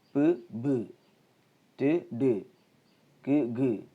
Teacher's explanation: You can easily understand that when we pronounce the second sound, we get some kind of vibration on our throat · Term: voiced sound